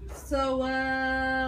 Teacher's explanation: صواف عشان يبين انه هنا في مشدد اللي هو النبر على المشدد الاخير. صواف صاد مفخمة مطبقة صح؟ أيوة. صوا والواو مرققة.